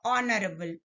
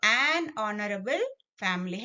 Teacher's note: Start with a consonant letter, but the sound is O, honorable. So, an honorable family. H is silent here.